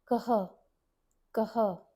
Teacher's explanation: we pronounce the k letter fully with the closed mouth sound and then add a h letter h with an aspiration. · This matra carries a h sound, almost like an aspirated h. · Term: aspirated h sound